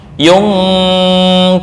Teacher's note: Maka kita dapati bahwa nun tersebut tidak menetap di ujung lidah. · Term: ikhfa